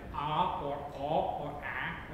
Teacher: there is some kind of throatiness or backness because it is only in uvularized contexts, and it's a transitional vowel between a uvular and a high or a front vowel.